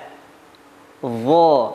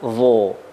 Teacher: pengucapannya dengan mengangkat pangkal lidah. Dha, bukan dho.